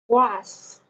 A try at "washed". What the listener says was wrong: Okay, the sound, and you need to add the ending sound. Washed. Washed. Okay, make sure that you have that ending sound. And whenever you see sh, make sure that you make your mouth round and push it strong. Shh, shh, right?